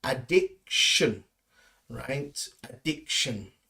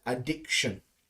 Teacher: We don't really use the T sound. It's more of a sh sound in there.